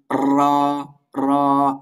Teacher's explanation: র উচ্চারণ করার সময় জিহ্বার মাথাটা বা আগাটা একটু কম্পন সৃষ্টি হবে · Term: তাকরার